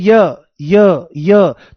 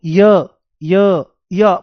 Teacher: तो शुरुआत में एक बहुत बारीक, बहुत छोटी ई की आवाज आती है। आप बोल के देखो य, बहुत छोटी सी, बारीक सी, बहुत जब ध्यान देंगे तभी पता लगेगा। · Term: अर्धस्वर